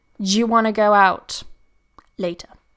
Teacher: What happens when you get this combination of duh and ya together? We get a ja. So, duh, ya, ja, ja.